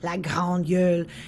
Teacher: the French in Saguenay is quite far back in the throat. It's very dark